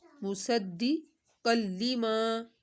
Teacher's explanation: ایک الف کے برابر اس کو کھینچنا ہے، آگے دو زبر، تنوین کے بعد لام ہے، لام پر ہم نے غنہ نہیں کرنا